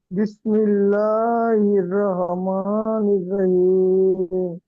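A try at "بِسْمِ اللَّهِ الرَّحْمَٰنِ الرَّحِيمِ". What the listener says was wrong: খেয়াল করেন, এখানে আমি আপনাদের 4 জনের কাছে শুনছি, তো প্রবলেমটা কি হয়েছে দেখেন। বিসমিল্লাহ, এখানে অনেকে ল বলে ফেলেন, ল না লা। হির রাহমানির বলে ফেলেন অনেকে, রাহ হবে না, রহ, ক্লিয়ার?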